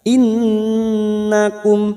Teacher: nun yang bertasdid gunnah mustaddada kita dengungkan selama 3 harokat